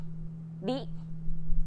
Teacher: lightly tap the gum ridge behind your upper teeth with the tip of your tongue.